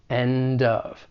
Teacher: we can link that final consonant sound and end with the beginning vowel sound in of end of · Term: linking